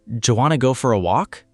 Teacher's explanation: Go for a go for a O and for disappears. Walk stays strong because it's the content word.